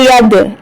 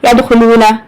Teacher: اب دال کے اوپر کلکلا کریں گے، تھوڑا سا جھٹکا دیں گے